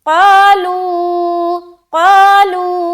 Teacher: قا کو بھی کھینچیں گے، لو کو بھی کھینچیں گے، دونوں کو برابر کھینچنا ہے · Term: الف مدہ